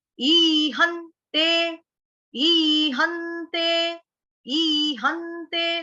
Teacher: तो डबल न आ रहा है, सुनाई पड़ रहा है डबल न, आधे आधे दो न, आधे आधे दो न सुनाई पड़ेंगे, आधे आधे दो न आपके भी आने चाहिए।